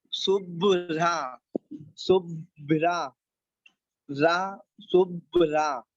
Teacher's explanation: रा का इसका पूरा उच्चारण होगा और भा का आधा उच्चारण होगा।